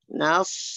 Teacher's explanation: Nas, sotnya, pangkal lidahnya angkat.